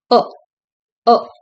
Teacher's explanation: It's a short vowel, open back vowel. The tongue is placed low.